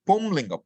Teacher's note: There should be nasalization. But normally now what happens? We just say pullinga because we are used to dropping the nasals.